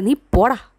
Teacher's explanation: There is a rhythm in it, അല്ലേ? നീ പോടാ എന്ന് പറയുമ്പോഴത്തേക്കും പോടായിക്കാണ് അവിടെ സ്ട്രെസ്സ് കൂടുതൽ പറയുന്നത്. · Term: അയാംബ്